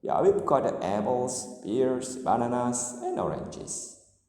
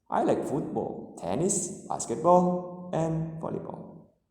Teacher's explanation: Intonation falls on the last item to show that the list is finished.